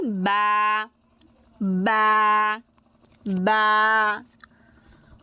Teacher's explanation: উভয় ঠোঁটের বীজ অংশ শক্ত করে লাগিয়ে একসাথে শক্ত করে লাগিয়ে উচ্চারিত হবে